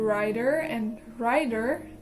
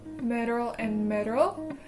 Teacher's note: the sound produced by the tongue tip tapping the alveolar ridge briefly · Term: flaps